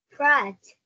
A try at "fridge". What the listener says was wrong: Âm y. Âm y mà. Sao đọc ra âm e rồi?